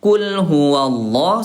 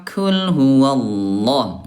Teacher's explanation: Nah huruf qaf ayah bunda dia jahar tidak ada udara, kalau ka dia ada udara ya. Kalau ko dia tebal diangkat pangkal lidahnya, kalau kaf dia tipis ayah bunda turun pangkal lidahnya